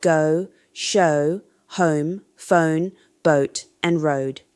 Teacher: The American R diphthong in goat words shows clear movement within each syllable. It begins with a back, rounded vowel and glides to a high back position. This creates more pronounced movement compared to British pronunciation. · The American version has a fuller, rounder quality with obvious gliding movement.